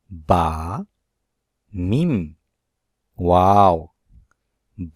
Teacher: দুই ঠোঁটের সমন্বয়ে উচ্চারণ হয় বা মিম ওয়াও